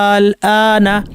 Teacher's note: এখানে টান হলো আলিফের কারণে, আর আলিফের পরে সুকুন থাকায় সেটা টানটা, আলিফের বেসিক টানটা বর্ধিত হয়ে গেল